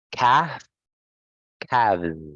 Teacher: you have a silent L actually. So you don't need to say the letter L there. It's calf, calves.